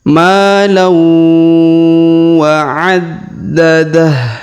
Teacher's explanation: Huruf lam bertemu waw ini ya, maka didengungkan dan ditahan 2 sampai 3 harokat.